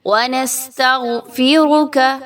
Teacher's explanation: را جو ہے اس پر پیش ہے، اور ایسی را کو ہم پر پڑھتے ہیں